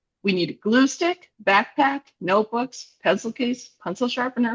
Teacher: when I'm making a list, I have rising, rising, rising, rising, falling.